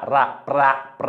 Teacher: प्रा म्हणजे प अपूर्ण उच्चाराचा र पूर्ण उच्चार रा